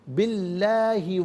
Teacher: لفظ اللہ کی لام کو یہاں باریک پڑھیں گے اس لیے کہ ما قبل با کے نیچے زیر ہے